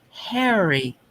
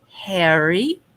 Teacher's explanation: Open and nice soft H like you want to make it silent.